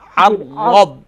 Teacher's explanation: عین کو لائٹ کریں گے، را کو فل ماؤتھ کریں گے